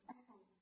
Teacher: The second sounds very weak, but the app sounds more like stressed and loud.